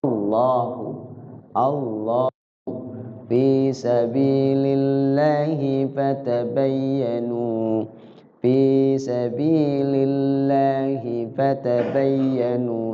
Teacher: ya mukun kemudian kalau diwafkan lafzul Allah cuma dua ketukan aja asalnya panjang nya Allah itu dua ketukan